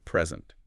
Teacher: if you stress the first syllable it's a noun meaning a gift but stress the second and it's a verb to give something